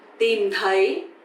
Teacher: tìm is dấu huyền, you have to go down, and thấy, dấu sắc, you have to go up